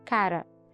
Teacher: Essa articulação é considerada TEP alveolar vozeado, ou seja, TEP porque é um contato leve, um contato rápido do articulador com outro articulador.